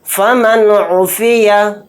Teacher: یہاں پر نون ساکن ہے، نون ساکن کے بعد عین آ گیا تو یہاں پر بھی اظہار کا قاعدہ ہو رہا ہے، کیونکہ عین حروف حلقی کے 6 حروف میں سے ایک حرف ہے۔ اس نون کو ظاہر کر کے بلا غنہ کے جلد اس طرح سے پڑھیں گے۔ فمن عفیہ، میم نون زیر من، حمزہ زبر آ، من آ، خو زیر خی، من اخی، ہا زیر ہی، من اخیہ۔